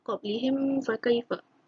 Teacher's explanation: Apabila mim mati atau bertanda sukun bertemu dengan huruf izhar iaitu huruf fa. Bacaan mim mati dibaca dengan jelas tanpa dengun serta bibir harus dirapatkan. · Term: izhar syafawi